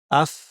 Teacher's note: ফায়ের আওয়াজটা একটা ফ্যাশফ্যাসে আওয়াজ এবং এতে প্রচুর আওয়াজ এবং বাতাস থাকবে।